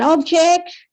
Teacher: when it is noun sometimes we say the first syllable we emphasize on the first syllable